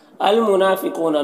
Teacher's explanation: المنافقون نون میں کھڑا زبر ہے، ایک الف کے برابر کھینچیں گے، قاف حروف مستعلیہ میں سے پر پڑھیں گے، واو مدہ ہے، ایک الف کے برابر کھینچیں گے۔